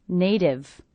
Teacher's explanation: I hear this T as a D, because again it's a T coming between 2 vowel sounds, will be a flap T, sounds like a D.